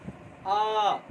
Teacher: विवृत स्वर कहने का मतलब है कि वैसे वर्ण का उच्चारण किया जाता है जिसको उच्चारण करने में हमारा मुंह पूरा खुलता है, ठीक है ना, आ, इस तरह से, ठीक है।